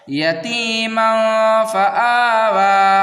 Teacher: 1 الف کے برابر کھینچنا ہے، زیادہ نہیں کھینچنا ہے